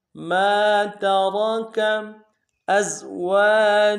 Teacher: مَا تَرَكَ أَزْوَاجُكُمْ، حمزہ کو زا کے سامنے لانا ہے، زا یہ سیٹی والا حرف ہے، سیٹی ہوگی۔